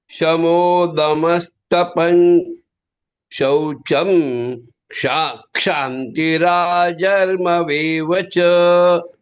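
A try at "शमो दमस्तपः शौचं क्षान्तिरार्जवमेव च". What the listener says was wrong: Again, you said tapan, it is tapas shaucham. It's okay.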